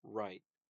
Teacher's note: at the beginning of the word, you're already pronouncing it with rounded lips. That's you're not like going from unrounded lips to rounded lips.